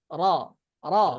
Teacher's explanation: ১০ নম্বর মাখরাজ, জিহ্বার আগার পিঠ তার বরাবর উপরের তালুর সঙ্গে মিলিয়ে র র। র এখানে র একটা ভুল করি আমরা অনেক সময়, যে কি করি, জিহ্বার আগার পিঠ বলাতে অনেকে জিহ্বাটাকে উল্টে দেয়, র র এরকম বলতে চায়, মানে জিহ্বার অপর পাশে যে ইয়াটা আছে এটাকে আমরা পিঠ মনে করি।